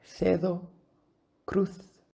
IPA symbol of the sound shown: θ